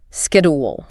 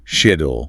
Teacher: The Americans kept that hard Greek K sound. >> But in the UK it's soft. It's a sh sound. Shid. >> Like a garden shed.